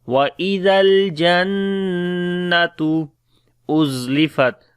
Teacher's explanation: On the Noon we make Ghunna as there is Shadda sign. The Ta has a Dhamma, so we say وَإِذَا الْجَنَّةُ أُزْلِفَتْ Za we read in bit hard sound, on the Ta again we make Shiddat and Hams quality.